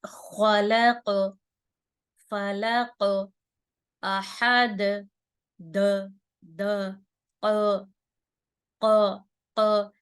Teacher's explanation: یہ دیکھیں پلٹ کر آواز آ رہی ہے, یعنی آواز ریپیٹ ہو رہی ہے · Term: قلقلہ